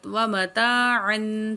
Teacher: تھوڑا غنہ کریں گے, ناک میں آواز لے کے جاتے ہیں جب تنوین کو پڑھتے ہیں